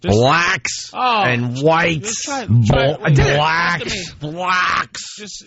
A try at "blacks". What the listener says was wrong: You're saying it like brack almost. B-L-A-C-K-S. Just say black.